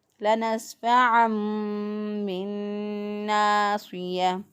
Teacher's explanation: تنون کو ہم نے میم بنا کر پھر ہم نے ادا کرنا ہے